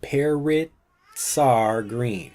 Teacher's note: we've got the S from parrots combining with the R or the a sound from R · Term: blending